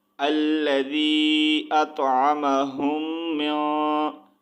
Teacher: ہم وہاں پر غنہ کریں گے، یعنی کہ آواز کو ناک میں چھپا کر پڑھیں گے